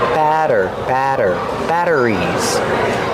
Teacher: We see the double T making a fast D sound.